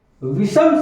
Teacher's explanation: इस दंत सा के स्थान पर मूर्धन्य सा कर देंगे।